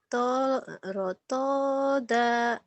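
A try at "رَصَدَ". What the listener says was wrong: Rotoda. Dengan rotoda itu mah sod. Rosoda. Rosoda.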